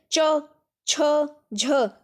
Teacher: स्पर्श संघर्षी व्यंजन वर्ण के उच्चारण से पूर्व मुख्य अंगों का स्पर्श व बाद में घर्षण होने पर उच्चारित होने वाले व्यंजन स्पर्श संघर्षी व्यंजन की श्रेणी में आते हैं।